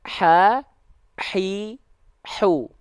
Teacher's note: jadi hak kecil itu dilafalkan tepat dari bagian tengah-tenggorokan